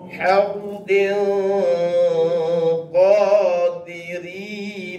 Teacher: Jadi menyembunyikan tanwin itu ke dalam huruf qaf. Hardin. Sampai kita punya lidah tu nak pergi kepada huruf qaf.